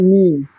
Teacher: মিমের মাখরাজ হচ্ছে দুটো ঠোঁট, দুটো ঠোঁটের শুকনো অংশ মিলিত হয়